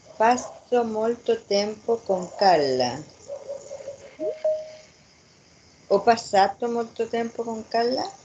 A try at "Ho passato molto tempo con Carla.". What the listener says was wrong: Perfecto. Con más convencimiento. No es pregunta, es...